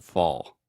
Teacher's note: the ah combined with the dark l sound almost makes the same sound as the all so fall yeah it's not totally like fo but you have